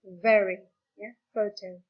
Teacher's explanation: Labiodental adalah bunyi yang melibatkan bibir dan gigi. Dalam hal ini bibir bawah dan gigi atas. Ya, labio itu bibir, dental gigi.